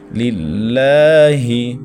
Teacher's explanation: الحمدللہ، للہ، لفظ اللہ سے پہلے زیر ہے تو اس کو باریک پڑھیں۔ للہ، اور لفظ اللہ کے اوپر کھڑی زبر ہے تو 1.5 الف تک کھینچیں